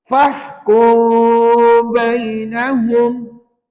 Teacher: Renggang bibir dan dengung dua harakat. Baru betul sebutan bacaan ikhfa syafawi.